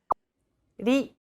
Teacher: Think of the quick tapping motion your tongue makes as it strikes the top gum ridge in words like ladder or butter.